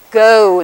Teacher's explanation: the O on the end has a kind of sliding diphthong go quality to it